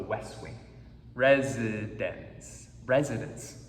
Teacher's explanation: a sandwich it's like a sandwich right here's consonant t consonant we don't really hear the te it's dropped it's thrown out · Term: CTC sandwich